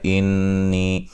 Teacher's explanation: نون مشدد پہ غنہ ضروری ہے، غنے کی مقدار ایک الف کے برابر ہوتی ہے، اور یہ یا مدہ کو یا مدہ ہے، یا مدہ کو بھی ایک الف کے یعنی کہ حروف مدہ کو بھی ایک الف کی مقدار کے برابر لمبا کرتے ہیں۔